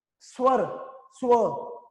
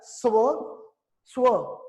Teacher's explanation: ਸੱਸਾ ਤੇ ਵਾਵਾ ਇਕੱਠਾ ਲਿਖਿਆ ਬੋਲਿਆ ਜਾਊਗਾ, ਅਲੱਗ-ਅਲੱਗ ਨਹੀਂ ਬੋਲ ਸਕਦੇ।